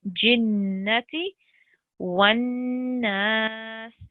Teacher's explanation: So this is a 2-second elongation here, but on noon mushaddid, there's a nasal sound or ghunna sound.